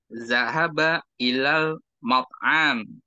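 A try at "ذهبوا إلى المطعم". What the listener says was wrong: Ilal mat'am. Hanya jangan dipanjangin.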